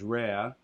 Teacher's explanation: so you'll get that r dropping